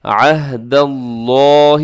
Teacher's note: ینقضون، ینقضون، آگے عہد اللہ، یہاں پر اکثر لوگ کیا پڑھتے ہیں عہد اللہ، عہد اللہ کر دیتے ہیں، یہاں پر عین ہے تو عین کا اپنے خیال کرنا ہے۔ عہد اللہ، لفظ اللہ کو موٹا پڑھنا ہے، منہ بھر کے پڑھنا ہے، کیونکہ اس سے پہلے دال کے اوپر زبر ہے